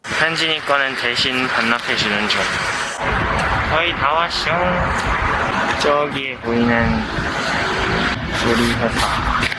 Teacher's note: It's light, but he has a bit of a nasal sound in his voice, and I think this plays a big role in making his voice sound so clear.